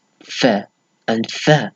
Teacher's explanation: So lowering, so the lower lip against the front teeth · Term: labidental